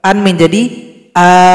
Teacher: hamzah yang fathatain, cara berhenti harokatnya hilang satu, kita sendiri yang menambahkan alif di belakangnya sehingganya panjang dua ketukan. Namanya mad iwad.